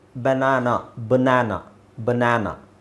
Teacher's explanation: BA ಬಂದಾಗ ಬ್ಯಾನೇ ಬರಬೇಕಂತಿಲ್ಲ, ಬ ಅಂತ ಸೌಂಡ್ ಬರುತ್ತೆ